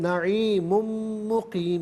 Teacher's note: میم کی آواز کو غننے کے ساتھ ادا کیا جائے گا